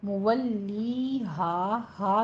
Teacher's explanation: मुवल्ली हा है, मुवल्ली हा नहीं पढ़ना, मीम के ऊपर होंठ गोल कीजिए और लाम की तशदीद अदा करते हुए आगे या मद्दा को खींचना है, 2 काउंट करने हैं।